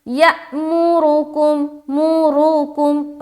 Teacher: را کو ہمیں پر رکھنا ہے کیونکہ را کے اوپر پیش ہے